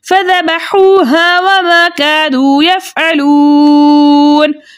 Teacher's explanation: वाव मद्दा को दो हरकत की मिक़दार खींच कर पढ़ते, लेकिन आगे नून का सुकून अर्ज़ी वक्फ़ की सूरत में आ रहा है, इसलिए यहाँ पे मद बनेगी मद्दे अर्ज़ वक्फ़ी जिसकी मिक़दार 2-4 6 हरकत है, लेकिन 6 हरकत की मिक़दार खींच कर पढ़ना ज़्यादा बेहतर है।